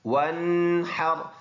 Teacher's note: ح گلے سے ادا ہوگا، را دوبارہ پر ہے، را سے پہلے ورڈ پر زبر ہے تو اس کو ہم نے پر ادا کرنا ہے۔